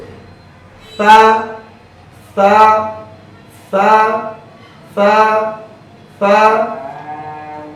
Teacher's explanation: জিহ্বার আগা সামনের উপরে দুই দাঁতের আগার সঙ্গে লাগিয়ে সা হরফটি উচ্চারিত। সা হরফটি পড়ার সময় আওয়াজ একেবারে নরম হবে, চিকন হবে, নিচের দিকে দাবিতে হবে, হামস বাতাস চালু, আওয়াজও চালু।